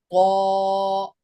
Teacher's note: कौ में होंठ गोल होंगे, देखो ऐसे।